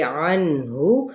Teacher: نون پہ اظہار کا قاعدہ ہے اور ہا کی پیش کو بھی کھینچیں گے نہیں